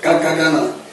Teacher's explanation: ट जो आप बोल रहे है तो आपका जो जीभ है व आपके मुर्धन्य से लग रहा है